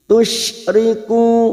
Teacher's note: dumah diikuti wawu sukun dua harokat kita panjangkan.